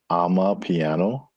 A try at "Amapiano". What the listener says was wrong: Amapiano. One word, Amapiano. Not I'm a piano, but ama.